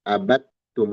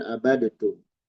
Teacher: Dal dan ta itu satu makhraj. Terjadi pertemuan, maka dal dileburkan ke ta. Abattum. Kita baca seperti ini ya. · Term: idgham mutajanisen sogir